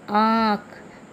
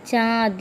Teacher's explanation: इसका उच्चारण अनुस्वार की अपेक्षा हल्का होता है। इसका उच्चारण करते समय हवा नाक और मुंह दोनों से निकलती है। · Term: अनुनासिक